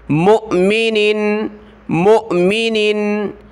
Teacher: मीम को हमज़ा साकिना के साथ मिलाएंगे, वाव को नहीं पढ़ना, झटके के साथ पढ़ेंगे